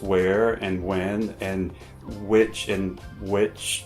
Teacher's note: hardly anyone pronounces the H sound in words such as where, when, or which. So they're pronounced where and when, and which and which have become homophones.